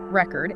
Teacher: If you stress the first syllable record, it's the noun like a musical album or a written account.